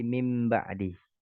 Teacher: nun sukun yang dirubah menjadi huruf mim. Misalnya min ba'di jadi mim ba'di. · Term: iqlab